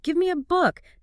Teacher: The A is not pronounced E like the letter. It's the schwa.